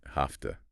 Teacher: F-pith. So the V devoices becomes an F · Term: Devoicing